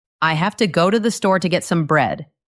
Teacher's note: This sentence does not have 11 equal beats. It has 4 main musical notes. The stress is on go, store, get, bread. Everything else is just the fast, quiet sound in between.